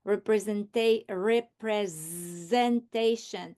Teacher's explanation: I can hear that s sound as z